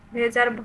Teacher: ভেজার ভ ঘোষ মহাপ্রাণ